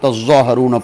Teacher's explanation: ثم انتم ہاؤلائی تقتلون انفسکم وتخرجون فریقا منکم من دیارہم تظاہرون، یہ اصل میں تظاہرون فیہ ادغام التاء فی الاصل فی الظاء، تظاہرون تھا، تا اور ظا قریب المخرج ہے، اس لیے تا کا ظا میں ادغام کر دیا